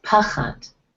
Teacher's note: the kamatz is stronger than the patach, so the pa is stronger than the cha